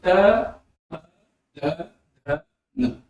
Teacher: जब जीभ दांत के पास आती है तब वे दंत ध्वनियां होती हैं।